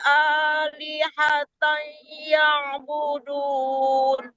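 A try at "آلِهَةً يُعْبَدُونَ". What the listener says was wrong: Yang dikebalikin Bu, bukan yang tapi badun dikebalikin deh. Ibu bukan budun tapi badun. Hati-hati ngelihat harakatnya.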